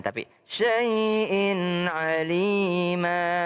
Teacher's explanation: Jadi kalau ada tanwin syai'in bertemu dengan ain syai'in alima. Ya, enggak berdengung dia.